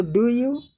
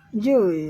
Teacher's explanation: इस तरीके से रुक रुक कर बोलते हैं, जोर दे कर डू यू go to walk today in the morning, रुक रुक कर। लेकिन नेटिव स्पीकर, नेटिव या स्वाभाविक गति, ये डू यू को मिला देते हैं। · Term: संघीकरण